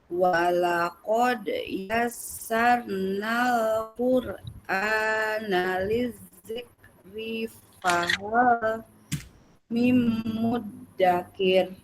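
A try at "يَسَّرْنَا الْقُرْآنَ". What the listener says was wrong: Nah, itu pangkalnya yang tebal kurang naik ya. Yassaru. Seru. Nah, pangkal lidahnya naik. Quru.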